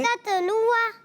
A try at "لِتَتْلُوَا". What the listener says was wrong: Okay, بس لتت, بس یہ غلطی آ گئی, یعنی تا پر آپ نے سکون ملا دیا. لتتلوا.